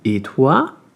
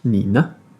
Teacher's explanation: en chinois, on va pas monter, sinon ça ferait un deuxième ton. Très important de rester neutre.